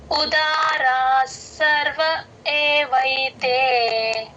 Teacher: 18వ శ్లోకం శ్లోకం నెంబర్ 18 ఉదారా సర్వ ఏవైతే ఉదారా ఉ అచ్చు ఉదారాలో ఉ అచ్చు కంఠంలో నుంచి రావాలి